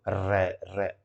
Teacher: जो जीभ है वो ऐसे लड़खड़ाएगी, जैसे हवा जो है उससे रगड़ करके बाहर आएगी। देखो र, र, जीभ जो उठेगी और जो है यूं यूं करेगी। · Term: लुंठित